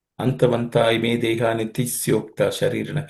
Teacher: there are absolutely no aspirated consonants